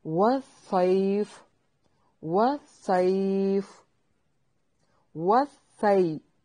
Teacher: واو ہونٹوں کو گول کرنا ہے، صاد کو موٹا کر کے ادا کریں گے۔ سی، یائے لین ہے، وقف کی صورت میں مد کر سکتے ہیں۔